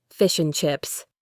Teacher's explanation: The D in and is almost always dropped in casual speech.